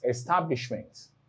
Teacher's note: so in established, the stress is placed on STA